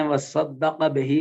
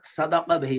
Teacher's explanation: انہوں نے وصدق بہی کو صدق بہی پڑھا، یعنی تشدید کا اظہار نہیں کیا ہے